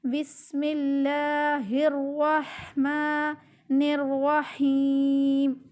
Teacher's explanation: سین میں تھوڑی سی سیٹی کی آواز پیدا کرنی ہے، بسم میں سخت نہیں کرنا